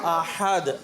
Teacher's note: ایک ہے ہا جو حلق کے درمیان سے، وہ احد میں ہے